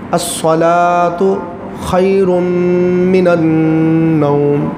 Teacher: نوم کو لمبا نہیں کرنا، غنہ کر کے تو جلدی سے اس کو ختم کر دینا۔